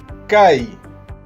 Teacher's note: Es un sonido oclusivo en donde se expulsa el aire de un golpe.